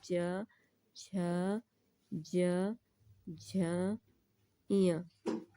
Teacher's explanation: इन सभी का उच्चारण तालव्य से होता है, इन्हें तालव्य वर्ग का कहा जाता है।